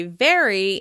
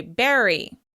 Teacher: distinguish between the V sound with your teeth touching your lips and the B sound with your lips touching. There should be a clear difference between how you say very and how you say berry.